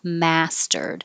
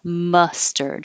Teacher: the stressed vowel is mass you have to open and lips back mastered that's different than up here number four ma mustard your jaw stays more closed and the tongue is pulled back